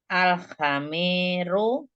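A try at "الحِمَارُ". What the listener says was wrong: Jangan ha, tapi haknya harokatnya kasroh. Al-himaru.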